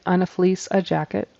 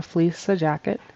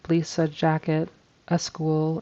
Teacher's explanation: There's a little schwa sound, a little in there, which is tempting to do when a word ends in or begins with an S. Sometimes you might stick that in there.